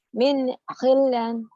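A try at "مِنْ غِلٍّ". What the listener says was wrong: Ini walaupun di atas, ini sebetulnya di bawah karena di bawah tasdid gitu. Kalau ada tulisan begini jangan min gilan, tapi min gilin harusnya ditulisnya di sini harusnya.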